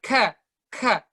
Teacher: ada kayak hembusan angin, percikan angin sedikit pas kita baca kaf.